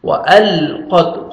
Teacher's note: وأل ایسے نہیں پڑھنا. وألقت قاف کو موٹا کر کے پڑھیں گے اور تا کا لگ سے ساؤنڈ آئے گا